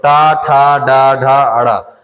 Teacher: जो ट वर्ग है वो मुर्धा से बोले जाते हैं